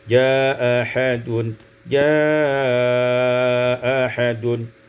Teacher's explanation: isqatul hamzatil ula, dibuang hamzah yang pertama menjadi jaa ahadun, jaa ahadun, qasar dan tawassut.